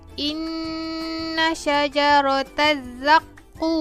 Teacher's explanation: Inna syajarataz zaqum. Ku saya panjangkan 4 harokat, baru tutup mulut, matikan huruf mim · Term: mad arid li sukun